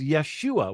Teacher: they actually drop off the ho, so it becomes Yeshua